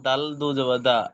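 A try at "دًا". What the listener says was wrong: দাল দু জবর দা নয়, আমরা উপরে উচ্চারণ করেছি দাল দু জবর দান, দান দান।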